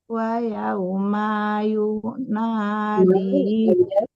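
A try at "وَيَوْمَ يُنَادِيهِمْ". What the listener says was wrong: Wa yauma ma-nya tidak panjang.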